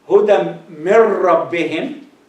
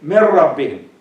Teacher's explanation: When you say huda mir rabbihim, because this noon here is noon sakin, and it is followed by ra. So you combine them together, and there is no ghunna